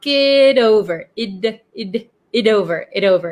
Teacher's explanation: talk it over before deciding so here notice that the it the T in it becomes a flap T because it is sandwiched in between two vowels